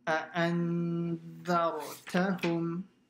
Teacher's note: hamza comes out from the bottom of the throat. So it's a very sharp sound.